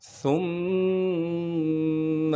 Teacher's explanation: سا کو باریک کر کے نرم کر کے پڑھنا ہے اور سا کو آگے میم سے ملائیں گے غنہ کے ساتھ، ثم اولا لک فاولا۔